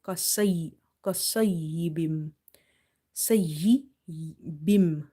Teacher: Swad is heavy, is from the musta'aliya letters. So we will make it quite full mouth